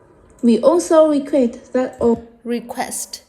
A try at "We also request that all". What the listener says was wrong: Quest. Này, cô thấy thiếu âm sờ đấy. đấy, thế là thiếu âm SC không? Thiếu cái chữ SC ở đây không? Request.